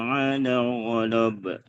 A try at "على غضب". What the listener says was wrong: على غضب لا panjang